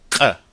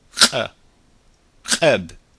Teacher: It actually is a K immediately followed by a glottal stop.